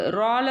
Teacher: ரால பார்த்தீங்க அப்படின்னா ஃபத்ஹா இருக்குது ஃபத்ஹா இருக்கும்போது தப்ஹீமாக சொல்லணும் வல்லினமாக சொல்லணும்